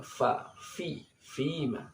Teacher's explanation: Fima anta min dzikraha. Fima, fa ini tempat keluarnya di ujung dua buah gigi depan bagian atas dengan bibir bawah bagian tengah, dan ini ada desisnya